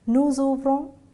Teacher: nous ouvrons, we pronounce the S there